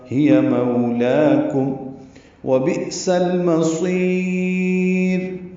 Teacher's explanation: بئ میں حمزہ ساکن ہے، یا کی شکل میں ہے، جھٹکے سے ادا ہوگا. سین کو لام سے ملائیں گے، اظہار قمری ہے، میم جلدی ادا کریں گے، صاد پر پڑھیں گے، صاد کو لمبا کریں گے وقفاً، مد عارض سکون بنا کے را کو باریک پڑھیں گے وقفاً.